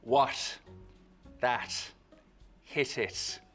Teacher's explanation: What's a slit T? It's a T sound made with a very soft closure at the tip of the tongue, or not even really quite a full closure at all. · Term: Irish slit T